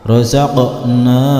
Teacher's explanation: untuk huruf qaf yang dipantulkan, yaitu suara pantulannya condong ke huruf a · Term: huruf qalqalah